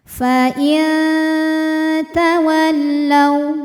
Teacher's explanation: Fa in ada hukum ikhfa aqrab karena nun sukun menghadapi huruf ta. Maka bunyi nun sukun samar-samar siap-siap menuju makhraj huruf ta disertai bunyi dengungan. Dengungnya kecil karena ta makhrajnya masih dekat dengan nun.